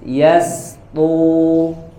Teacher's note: Huruf to-nya tebal, tapi huruf sinnya hati-hati dibaca tipis. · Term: sinnya dibaca tipis